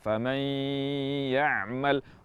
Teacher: Misalnya di kalimat faman ya'mal, nun sakinah bertemu ya di sini diidghamkan ke huruf ya disertai dengan gunnah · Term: idgham bi gunnah